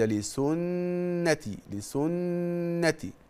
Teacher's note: حضرتك هتلاقي نون كده وعليها شده دي معناها ايه ان دي حرف غنه مشدد مقدار حركتين